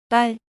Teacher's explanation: it's like a tense voiceless 'd' sound